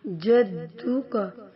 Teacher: جدو کا دال پر قلقلہ ہے اور وہ دال پر شد ہے، تو یہاں پہ جماؤ کے ساتھ پڑھیں گے، شدت کے ساتھ، قلقلہ یہاں پہ نہیں ہوگا